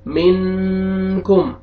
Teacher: حروف اخفاء میں سے دیکھیں کاف آ رہے ہیں تو یہاں پہ ہم اخفاء کریں گے، ناک میں آواز لے کے جائیں گے